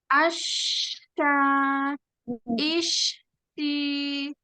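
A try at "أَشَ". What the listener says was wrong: nah ini Pak putus ya. Ini putus. Kenapa? Karena alirannya nggak panjang. Harus panjang alirannya. Asya, asya. Nah, ini putus, Nah, putus. Asya. Asya. Di ini namanya putus. Suaranya terputus. Harusnya nggak terputus. Dan harusnya mau dibilang nafasnya nggak cukup, ini baru 2 huruf. Asya. Asya.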